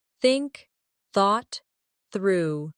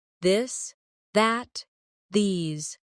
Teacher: For example, the th sound in think or this. Put your tongue between your teeth and push air out for think. For this, your tongue touches the same position but with your voice turned on.